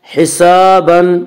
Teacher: فسوف یحاسب، الف مدہ، الف ہمیشہ مدہ ہوتا ہے، الف سے پہلے ہمیشہ زبر ہوتا ہے، الف مدہ کو 1 الف کے برابر کھینچ کر پڑھیں گے